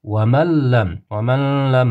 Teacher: Nunni bu g'unnasiz idom harfini ichiga kirgizib, g'unnasiz o'qiymiz. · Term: g'unnasiz idg'om